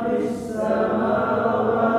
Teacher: ada tambahan suara ya, yang bunyinya itu tajam maksudnya desisnya ya, keluar dari makhraj yang sempit, desis ya, shafir namanya.